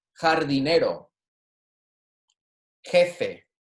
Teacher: the J is going to be a soft J, almost like our H, right? So think about this as almost like an H in the front here.